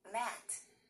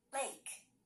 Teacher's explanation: Matt has the short vowel sound eh. Lake has the long vowel sound A.